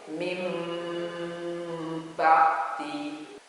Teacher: nunnya itu berubah menjadi suara mim. Tulisannya itu min ba'di, tapi cara membacanya itu mim ba'di. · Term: iqlab